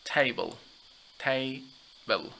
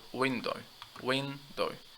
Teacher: the stress, as you see, is on the first syllable because it is a noun of 2 syllables. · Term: word stress